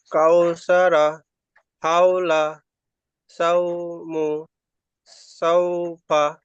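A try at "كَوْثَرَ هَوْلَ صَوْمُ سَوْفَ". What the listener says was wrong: মাশাআল্লাহ, খুব সুন্দর হয়েছে।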